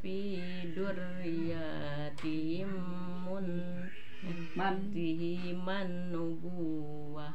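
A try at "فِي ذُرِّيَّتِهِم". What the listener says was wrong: Fi dzurriyyatihim. Tina tihiman mah rusuh, Bu. Fi dzur ditahan ta. Dzurri ri jangan ditahan. Fi dzurriyyatihim. Tah tiyatihim rusuh. Nah ibu mah terus hafal huruf kada leres kupingan fi dzurri datang ditahannya ditendetkeun gitu istasina teh tah fi dzur duarnya ditahan teh ri oge ditahan nembe yatihi man rusuh fi dzurriyyatihi man nubuwata.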